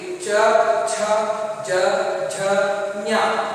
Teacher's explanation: ಹಾಗೆಯೇ ಚವರ್ಗ, ಇವನ್ನ ತಾಲು ಅಂತ ಕರೀತೀವಿ. ತಾಲು ಅಂದ್ರೆ ಹಲ್ಲಿನ ಮೇಲ್ಭಾಗದ ಹಲ್ಲಿನ ಹಿಂಬದಿಯಲ್ಲಿ ಒಸಡಿನ ಸ್ವಲ್ಪ ಮೇಲ್ಭಾಗದಲ್ಲಿ ಈ ಅಕ್ಷರಗಳು ಉಚ್ಚಾರಣೆ ಆಗುವಾಗ ನಾಲಿಗೆ ಸ್ಪರ್ಶವಾಗುತ್ತೆ.